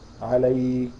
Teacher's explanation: اللي حصل بعمل همسه في الاخر يعني بطلع نفس ما بعبسو بطلع نفس هواء خفيف عند النطق بهذه الحروف الكاف والتاء